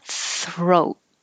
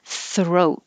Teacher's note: hold the final t